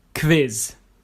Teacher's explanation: These letters come together like they do in English, but they sound like ‘kv’